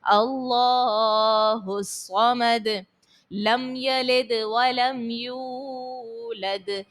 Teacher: آخر میں دال کو خوب ظاہر کرنا ہے حرف قلقلہ ساکن ہونے کی وجہ سے